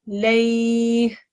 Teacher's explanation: There is a waqf at the end. The ha with the kasra becomes a ha sakin, and then you do the lay, but you extend it and you incorporate the ha sakin at the end.